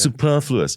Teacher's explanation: it's a very short first syllable and it's a sustained second syllable